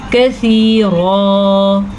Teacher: را کو پر پڑھنا کیونکہ را کے اوپر دو زبر ہیں